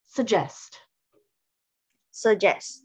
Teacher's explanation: So it's like suggest, because we want to stress the second syllable